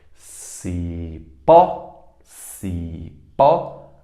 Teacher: portanto ela é oxítona terminada em é si pó si pó a mais forte é o pó · A mais forte é o pó. É a sílaba mais forte, oxítona.